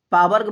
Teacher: ओंठ से आपका उ बोला जाता है, पा वर्ग बोला जाता है